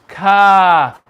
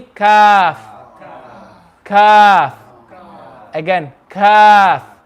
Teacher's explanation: when the back of the tongue touches the palate,